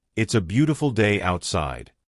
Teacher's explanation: Notice how the T in outside makes the tongue touch the top of the mouth. · Notice how the B in beautiful makes both lips touch.